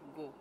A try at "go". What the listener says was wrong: You prolong the go.